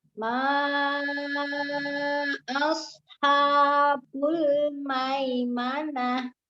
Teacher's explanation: untuk sod sukunnya juga disafirkan ya, sifatnya sama seperti sin tuh, sifatnya ada safirnya, ada sisnya di sodnya, tapi dia tebal